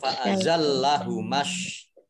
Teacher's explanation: Alif lamnya alif lam samsiah tidak dibaca alif lamnya. Kemudian shinnya dibaca double kan ada tasdidnya, ditandai ada tasdid.